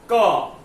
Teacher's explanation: क बोलते हैं तो उसके पीछे क्या आता है? अ नाम का स्वर होता है।